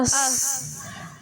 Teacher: حمزہ صاد موٹا کریں گے، صاد پر ہوگا، منہ بھرا ہوا ہوگا